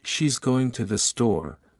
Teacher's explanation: are usually unstressed for example in she's going to the store going and store are stressed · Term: sentence stress